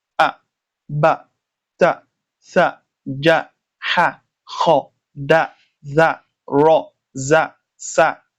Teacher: You heard that I pronounce mine without elongating the sound. It is one haraka. The length of the elongation is one haraka, just one sound.